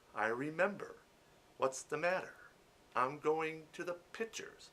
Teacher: you drop R's when they're supposed to be there.